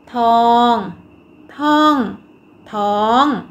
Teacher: คำว่าท้องเป็นอักษรต่ำผันด้วยวรรณยุกต์โทดังนั้นจะออกเสียงตรี